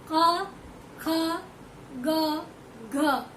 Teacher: जीभ जो है तलवे के पीछे हिस्से तक चिपक जाएगी यहाँ तक आने पर। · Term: कंठ की ध्वनि